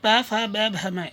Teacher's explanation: इनको बोलने पर हमारे होठ दोनों टकराते हैं, दोनों होठों को मिलाकर ये वर्ण बोले जाते हैं। इस कारण इनको बोलते हैं ओष्ठ, ओष्ठ वर्ण बोले जाते हैं।